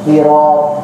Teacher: huruf isti'la, yaitu huruf yang kita ucapkan dari atas hanak, yaitu kita bacanya tinggi, yaitu kita keluarkan dari atas ujung-ujung daripada langit kita, dari atas langit-langit di mulut kita.